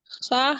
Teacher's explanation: ख हलक के इब्तदाई हिस्से से अदा होता है